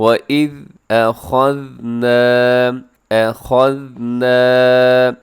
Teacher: صرف خا موٹا پڑھا جائے گا، باقی اس کے اندر جتنے بھی حروف ہیں سب کے سب باریک ہیں۔ حمزہ ہے، آگے ذال ہے، آگے نون ہے، الف، یہ سب باریک ہیں۔